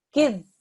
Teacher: This is a mushaddad dhal. We need to press down on it